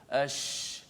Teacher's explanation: Bila terangkat ke langit dan suara tu hemburan daripada mengena belakang gigi atas, belakang gigi bawah, kemudian dia memenuhi mulut, jadilah sifat tafasyi